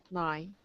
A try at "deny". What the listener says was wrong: Close. It sounds like you're just saying nigh. Make sure we get the duh. Deny.